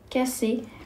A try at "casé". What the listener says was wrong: Quand j'ai un seul S, voilà, ça fait le son Z entre 2 voyelles. Donc, ça se lit casé.